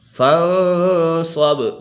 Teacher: فَانصَبْ، با کے اوپر قلقلہ ہو رہا ہے۔